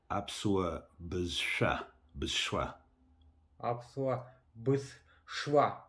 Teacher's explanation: Да, ударение на последний слог.